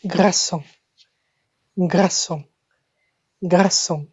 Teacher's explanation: Remember, we've got a dry R here.